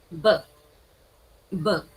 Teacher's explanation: when you produce the sound b, what happens? The lips touch